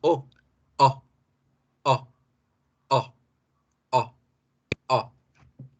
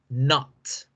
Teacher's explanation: Con la O corta, abrimos la boca como si fuésemos a hacer la A, pero en vez de la A decimos O